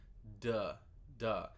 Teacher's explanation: when we say D notice where your tongue is duh duh it's at the front it's right behind your teeth